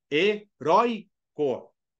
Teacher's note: Por quê? Porque ele é uma paroxítona. A sílaba forte é a penúltima.